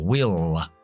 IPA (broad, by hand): wɪɫ